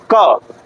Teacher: हवा को रोक के ब्लॉक किया। फिर जब छोड़ने गया तो उसको ओपन किया और छोड़ा। तो यह बाएं में बदल गया।